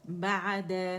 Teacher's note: عین میں توسط شو کریں گے، اور عین کی آواز جو توسط کی ہوگی وہ ہمارے زبان کے درمیانی حصے تک آنی چاہیے، اتنی یعنی پارشلی آواز چلے گی، ٹھیک ہے.